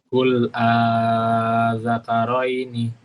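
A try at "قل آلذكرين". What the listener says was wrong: Nah, tasdidnya jangan lupa.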